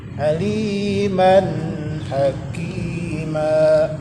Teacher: Aliman, tanwin berjumpa dengan ha. Tanwin berjumpa dengan ha, izhar. Izhar dibaca jelas.